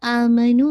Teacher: مد البدل میں بھی دیکھیے آ کو 2 اور نو کو 2